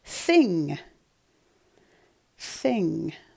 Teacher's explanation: your tongue touched your teeth your top teeth so that means it starts with a th